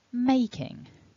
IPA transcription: ˈmeɪ.kɪŋ